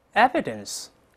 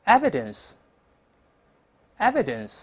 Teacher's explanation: 一般会出现个上牙轻触下唇发▁v▁这么一个动作